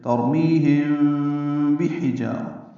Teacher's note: ترميهم بحجارة، با حا جلدی پڑھیں گے، حا وسط حلق سے ادا کریں گے، جا الف مدہ ہے، دو حلقات لمبا کریں گے، را پر پڑھیں گے. تنوین کے بعد میم آنے کی وجہ سے ادغام ناقص ہے مع الغنہ.